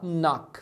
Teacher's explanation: o verbo knock, você não pronuncia esse K inicial, tá? Você fala knock, fala do N pra frente.